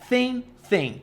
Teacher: é o som de s com a língua presa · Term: som de s com língua presa